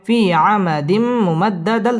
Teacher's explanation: তানবিনের বামে মিম আসছে ইদগামে বা গুন্না গুন্না সহ মিলিয়ে পড়তে হবে